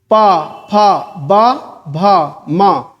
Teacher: जब दोनों होठ मिल जाएंगे तो क्या है ओष्ठ है